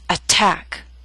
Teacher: attack is a word with two syllables stress is on the second